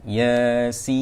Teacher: Ya 2 harakat, sin tu panjangkan 6 harakat.